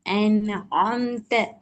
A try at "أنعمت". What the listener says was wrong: அந்த ஆம்த வானத்தை நோக்கி போகுது. அன் ஆம்த. அந்த இடத்துல இந்த ஐ வருது என்றா இல்ல. நீங்க அன்அம்த அலைஹிம் அது ஃபுல்லா ஓதுங்க. அந்த ஆ வானத்தை நோக்கி போகுது. பணியணும் அது. ஐன் உச்சரிப்பு சரி. ஐன் உச்சரிக்கப்படக்கூடிய இடமும் சரி. அன்அம்த அலைஹிம்ல சவுண்ட சத்தம் வந்து உயர்வை நோக்கி போறத மட்டும் நாங்க மாற்றிக்கொள்ளணும். அன்அம்த. அதே வடிவத்துக்கு ஆ வரணும். அன்ஆம்த வந்துச்சு அப்படி. அன்ஆ அல்ல. அன்ஆ. அன்ஆம்த. அன்ஆம்த பணியோன்.